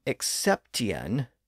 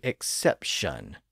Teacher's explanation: and that's how we got the modern pronunciation of those words the T sound shifted to an sh sound and the two distinct syllables at the end were slurred into